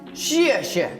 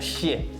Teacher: Too much SH sound in there, so you want a more like a X sound